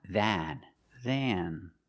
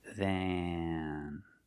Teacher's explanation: It's longer and it goes in your nose. It has a nasal sound. Than. That's how you pronounce the word if you say the word by itself.